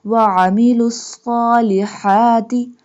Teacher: Ain and Ha both pronounced from the middle part of throat